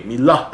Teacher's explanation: We stress it on the hey, milah, at the end.